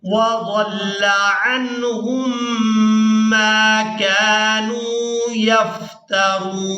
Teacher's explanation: हा को मीम मुशद्दद के साथ मिलाते हुए गुन्ना के साथ अदायगी करेंगे